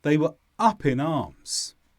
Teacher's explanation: The stress is on up and arms.